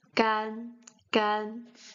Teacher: This a is a bit near to the e. It's not a, but it's gan, gan.